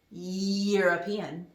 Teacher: listen to the sound european so that's a y sound it's not a vowel sound so therefore we're going to say a european not an european